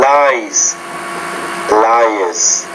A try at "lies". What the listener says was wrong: Not really. The second sound is a Z. Lies. So the first sound is lice, lies, lies.